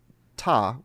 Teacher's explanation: if you say ta with the t sound it's the front part of your tongue